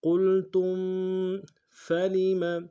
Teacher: لام ساکن غنہ نہیں ہوگا، قاف کو موٹا ادا کریں گے، تا کو میم ساکن کے ساتھ ملانا ہے، میم ساکن میں غنہ کریں گے